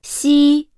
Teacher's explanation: the surface of the tongue approaches the hard palate without reaching it, leaving a gap in between.